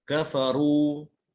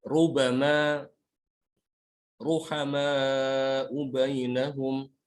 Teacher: Kemudian ra dalam keadaan dhammah ya. Ini juga dibaca tebal.